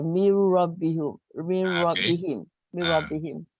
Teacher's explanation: Nun ni dimasukkan ke dalam huruf ra, jadi nun tu dihilangkan dalam bacaan. So nak menunjukkan dia dihilangkan dalam bacaan, dihilangkan tanda sukun dia. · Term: idgham